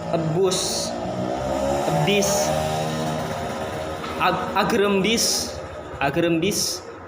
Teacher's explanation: Selanjutnya bagian C, I juga merupakan vokoid depan, juga vokoid depan, tinggi setengah tinggi, maksudnya tinggi setengah tinggi, tidak terlalu tinggi, semi terbuka, dan tidak bulat. Pengucapannya bunyi ini dengan mengangkat lidah bagian depan setengah tinggi. Bentuk bibir tidak bulat. dan rongga mulut semi tertutup.